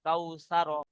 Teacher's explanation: ওয়াও সাকিনের ডান দিকে জাবার এসেছে, একে ওয়াও লিন বলে। ওয়াও লিনকে নরম আওয়াজে তাড়াতাড়ি পড়তে হয়।